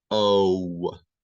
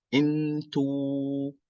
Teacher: in English, when you say the letter O, there's like this W that you add. O, but in Arabic, it's a flat sound.